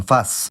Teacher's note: the fricative might do compensatory lengthening to take up the space left by the now gone plosive, whereas in situations where the plosive was last, we kinda already put a glottal stop there, so I don't see the compensatory lengthening happening there.